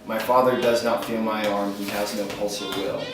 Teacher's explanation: So you can feel that unstressed, stressed, unstressed, stressed. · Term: iambic